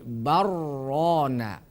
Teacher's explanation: juga kalau tidak Ee tidak ada hukum sakta atau sakat maka dibaca idgham namanya idgham mutaqorribain karena dua huruf yang berdekatan makhrajnya